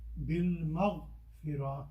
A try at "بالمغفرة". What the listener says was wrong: Try to get the little ha at the end because بالمغفرة. That little ha needs to come out.